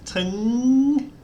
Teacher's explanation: This gives a rising tone. So as it goes on, it gets higher. So the first part is high and the second part is rising.